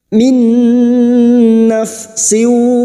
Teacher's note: nun sukun bertemu Nun idgam bighhunah siap masuk dengan mendengung masuk pada huruf nun dan mendengung selama tiga harakat